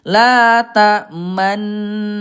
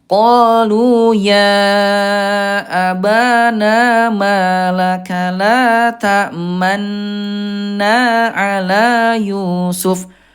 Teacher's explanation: ini ismam monyongnya domahnya jangan sampai hilang